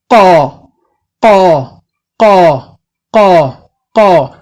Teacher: you will feel the back of your tongue rising to the top, to the soft palate